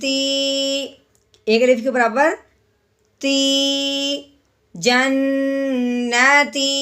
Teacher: یا ساکن سے پہلے جب زیر آ جائے تو اسے ایک الف کے برابر لمبا کرتے ہیں